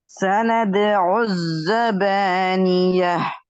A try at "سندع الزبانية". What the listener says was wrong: அந்த கடைசியில எஹ்ண்டு வாரதான் பிழை. அந்த எஹ்ண்டு வாரத்தை மாத்தினீங்கன்னா அவங்களோட சரி. سندع الزبانية. بانية.